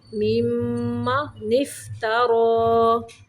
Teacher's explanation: را کو بھی موٹا پڑھیں گے